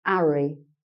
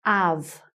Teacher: the cockney speaker tends to miss off the H